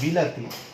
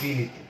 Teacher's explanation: এটাকে কিন্তু বলা হয়েছে স্বরসঙ্গতি, অর্থাৎ স্বরধ্বনির পরিবর্তন। স্বরধ্বনিটি ছিল আ, উচ্চারণে স্বরধ্বনিটি হয়ে গেছে রস্বই।